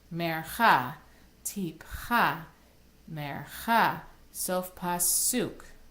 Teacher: they all have the syllable, their accented syllable on the end